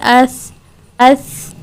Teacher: دیکھیں جو آواز ہے وہ جاری ہے، اس فوراً سے آواز نہیں رک رہی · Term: صفت رخاوہ